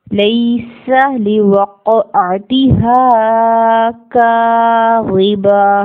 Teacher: ہا زبر الف ہا ہے, 2 حرکت اس کو لمبا کر کے ادا کرنا ہے. کاف زبر الف کا 2 حرکت لمبا کریں گے.